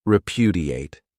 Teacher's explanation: This verb has four syllables and the stress is on that second syllable.